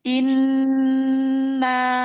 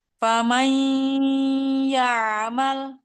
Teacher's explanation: Suara yang keluar dari pangkal hidung. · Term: suara guna